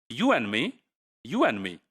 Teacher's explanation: we are not actually producing a complete and in this form we are just producing and so you and